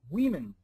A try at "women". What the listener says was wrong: Women. Not we, wit, women.